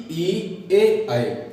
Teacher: अग्र स्वर में ई ए आई, इसमें क्या होता है कि जीभ होती है, जीभ का अग्रभाग है वो ऊपर होता है